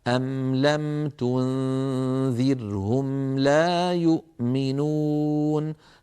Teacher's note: هذه الميمات السواكن غنتها ناقصة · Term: غنة ناقصة